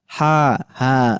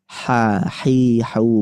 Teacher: Pita suara itu enggak bergetar. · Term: sifat Hames